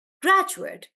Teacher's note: I'm stressing on the first part